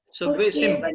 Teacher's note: अनुस्वार जो है बिंदी जो है उसका उच्चारण म में होगा, सव्वे सिम।